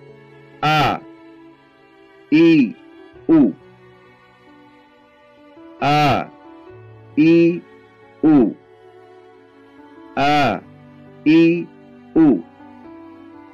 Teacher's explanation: Tempat keluarnya huruf alif yaitu dikeluarkan dari tenggorokan yang terjauh atau pangkal tenggorokan, sehingga berbunyi A, I, U.